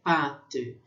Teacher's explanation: Aí tem um som um pouquinho mais longo, que é pate, quando tem esse acento circunflexo no A.